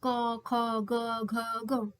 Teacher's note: क बोलने में कम ताकत लगी। ख बोलने में ज्यादा फिर ग बोलने में कम, घ बोलने में ज्यादा, ग बोलने में कम। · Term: अल्पप्राण